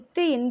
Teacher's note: மேல்வாய்ப்பல்லின் அடியை வந்து நாக்கின் நுனி பொருந்துவதால் வந்து இத்து இந்து பிறக்குது.